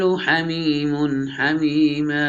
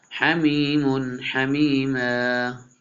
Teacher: اظہار کریں گے، میم کے اوپر تنوین ہے، اس کے بعد حروف حلقی میں سے ہے